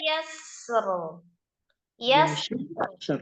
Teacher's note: sukun yang keduanya agak lirih, tapi tempatkan sifatul hurufnya di sukun yang pertama